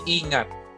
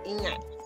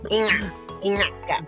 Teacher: it's not N-y, but it's kind of like you're using your inner back of your tongue